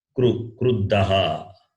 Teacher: When you say this kru, your lips should round.